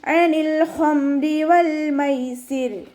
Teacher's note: അനിൻ്റെ sound തൊണ്ടയുടെ മധ്യഭാഗത്ത് തന്നെ കൊണ്ടുവരിക. ലാം കൊൽക്കല ലെറ്റർ ഇല്ലാത്തത് കൊണ്ട് ഹാഫ് സുക്കൂന് കൊടുക്കണം.